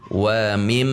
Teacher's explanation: Wa mim kasroh masuk ke mim tasydid dibaca gunnah musyaddadah, sehingga harus ada dengung di hidung. Wa mim, jika hidung kita ditutup maka terjadi mim, ada suara yang terganggu.